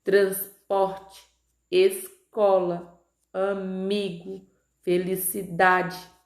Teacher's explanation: a sílaba tônica, ou seja, a sílaba mais forte, ela está na penúltima sílaba, tá? Por estar na penúltima sílaba, essa palavra ela é classificada como paroxítona.